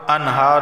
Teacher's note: نون ساکن کے بعد ہا حروف حلقی کا آیا ہے، اظہار ہوگا، غنہ نہیں ہوگا